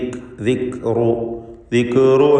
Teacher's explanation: ദിക്റു എന്ന ശബ്ദത്തെ ചലിപ്പിച്ച് കൽക്കല വരാതെ സൂക്ഷിക്കുക.